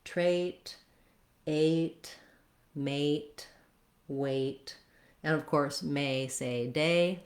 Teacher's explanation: lengthening and holding your vowel longer in these words with the A can be very helpful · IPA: /eɪ/